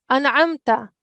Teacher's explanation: we will pronounce the meme clearly, and there won't be any nasal sound. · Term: izhar shafawi